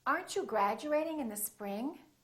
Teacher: when the t is followed by a u it becomes chew and when the d is followed by a u it becomes jew